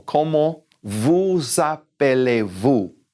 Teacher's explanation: that s is followed by a vowel it's followed by an A okay when that's the case we're actually gonna carry that s into the next word